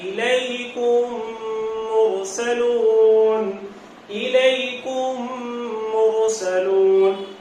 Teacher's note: میم کو میم میں مرج کرنا ہے, ملانا ہے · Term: ادغام